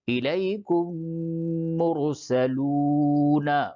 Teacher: میم ساکن کے بعد میم آوے تو اس کو میم میں ملا کر غننے کے ساتھ ادغام پڑھیں گے. اس کو ادغام شفوی کہتے ہیں.